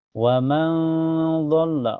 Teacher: nun sukunnya disamarkan ke ud dan ditahan sampai terasa ke hidung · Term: ikhfa hakiki, ihfa hakiki